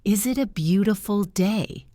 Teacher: My voice rises up at the end.